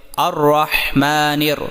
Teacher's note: میم کھڑا زبر ما، نون را زیر نیر، الرحمن۔ یہاں پر را مشدد ہونے اور زبر کی وجہ سے خوب موٹا کریں